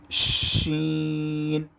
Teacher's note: شین کی آواز سیٹی کی آواز کی طرح موٹی آواز آئے گی۔